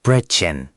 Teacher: It's like you're saying a long E, but with rounded lips.